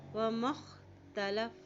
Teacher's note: میم کی زبر کو خا کے ساتھ ملائیں گے، وما اختلف، فا کی زبر کو لام سے ملائیں گے، لام کے اوپر شد ہے، ٹھیک ہے۔